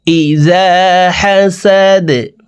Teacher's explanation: দাল কলকলার হরফ নিচের দিকে ধাবিত করে ধাক্কা দিয়ে দালকে সাকিন করতে হবে